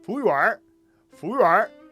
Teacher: And like the wu almost gets lost in the whole thing. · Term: Beijing accent